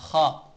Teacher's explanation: हलक का पहला हिस्सा जो शुरू से जो शुरू है जो मुंह की तरफ है वहां से खा अदा होता है खा जब हम खा बोलते हैं तो यहां से हमें महसूस · حلق کا پہلا حصہ جو شروع ہے، جو منہ کی طرف ہے، وہاں سے خا ادا ہوتا ہے